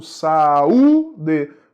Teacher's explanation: Saúde, é hiato, deveria receber acento no U. Saúde, U é forte, é tônico, formou hiato com a vogal anterior